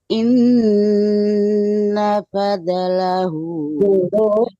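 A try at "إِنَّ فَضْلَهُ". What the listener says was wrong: Kalau dot mati itu tidak boleh dipantulkan ya, Bu, karena dot bukan huruf qalaqalah. Jadi inna fad tebal tapi tidak oleh enggak ada pantulannya. Fadlahu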